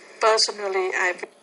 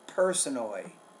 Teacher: you want to produce that P with more air